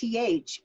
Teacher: when I make th it's got a little hiss to it and it's because I'm obstructing the air and so the air is